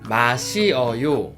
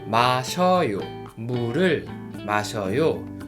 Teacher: Because the verb stem ends with e and the following vowel is 어. So we combine together and become one diphthong 여.